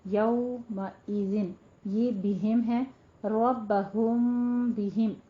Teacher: جب میم کے بعد با آ جائے تو وہاں پہ ہمارا اخفاء شفوی ہوگا اس کو بھی 2 کاؤنٹ کرنا ہے